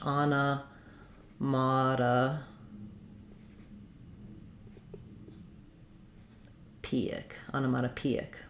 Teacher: Secondary stress here on this first syllable and main stress on P.